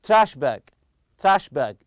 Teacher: you put the stress on the first part